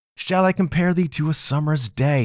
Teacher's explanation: That's 5 feet, 5 sets of two syllables equaling 10, and that is a line of iambic pentameter.